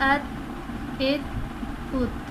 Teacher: اب ہم نے حمزہ کے ساتھ تا کی ادائیگی کی۔ تا ہمارا حرف قلقلہ نہیں ہے، اسی لیے ہم نے اس پر قلقلہ نہیں کیا۔ اس میں ہم نے حرف کو اپنی جگہ سے نہیں ہلانا ہے، حرکت نہیں دینی ہے۔